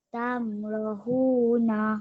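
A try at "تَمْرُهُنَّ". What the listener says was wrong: Okey, dekat ra tu tak ada mad asli, tak ada tanda panjang Okey, jadi kita baca pendek. Jadi Tamrohuna.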